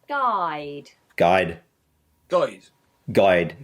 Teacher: In the West Country accent, this is more like oi. It's more rounded with the or vowel rather than the ah vowel at the beginning. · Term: I diphthong